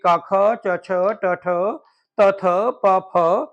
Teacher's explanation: प्रत्येक वर्ग के शुरू के जो दो वर्ण होते हैं वह अघोष होते हैं · जिन वर्णों के उच्चारण में तंत्रिका कंपन ना करे उसे हम अघोष बोलते हैं